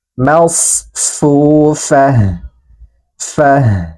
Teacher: ta marbuto yang berharokat dhammat tanwin ini berubah menjadi ha sukun